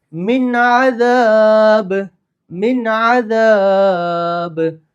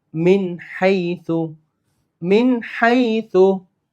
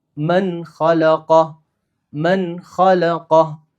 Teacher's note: നൂൺ സാക്കിനൊക്കും തെൻവീനു ശേഷം ഹുറൂഫുൽ ഹൽക്ക്, throat letters ആയ 6 അക്ഷരങ്ങൾ വന്നാൽ വെരി ക്ലിയർ ആയിട്ട് നമ്മൾ പ്രൊനൗൺസ് ചെയ്യാം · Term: ഇൽഹാർ